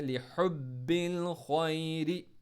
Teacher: ہا کو middle throat سے، خوا کو موٹا پڑھنا ہے